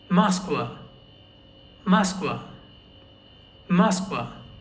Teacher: In this word, the last a is stressed and the o is not stressed because the o is not stressed. It is not read as o. It is read as a hence this entire word is read as masqua.